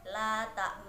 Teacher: bacaan ismam yang merupakan mencampurkan harokat fathah ke dumah dengan istilah bibir yang menonjol